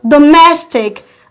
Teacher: We have mess. Let your force be on mess.